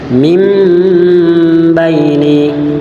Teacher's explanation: itu hukum bacaannya iqlab, maka nunnya diganti dengan mim. Ya, cara bacanya mim baini. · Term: iklab